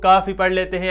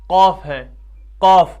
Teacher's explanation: زبان کی جو جڑ ہے وہ جڑ اوپر تالو کے ساتھ ٹکراتی ہے تب یہ ادا ہوتا ہے